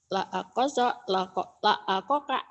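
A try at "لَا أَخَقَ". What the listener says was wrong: La aho. Ho-nya ketukar kok melulu ya. La akhoka. La akhoka.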